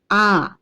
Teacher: এই আ ধ্বনিটা উচ্চারণের বেলায় আমাদের ঠোঁট সবচেয়ে বেশি খোলে। · এই স্বরধ্বনি উচ্চারণের বেলায় আমাদের জিভের অবস্থান সম্মুখেও হয় না, পশ্চাতেও হয় না, কেন্দ্রের দিকে থাকে। অর্থাৎ এক্ষেত্রে আমাদের জিভ অনেকটা শায়িত অবস্থায় থাকে। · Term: বিবৃত স্বরধ্বনি, কেন্দ্রীয় স্বরধ্বনি